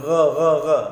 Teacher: di bawah anak tekak pangkal kerongkong huruf ghain.